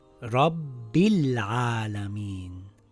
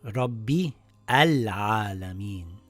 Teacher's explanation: if we continue reading the sentence, the Hamzatul Wasl gets dropped. So this will read Rabbil Alameen and not Rabbi Al-Alameen.